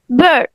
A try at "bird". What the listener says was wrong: ضم بقك في الاي ار كده ما تقولش بير تقول بيرد بيرد